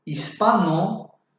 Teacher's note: Hispano es una palabra llana o grave. Se acentúa en la sílaba pa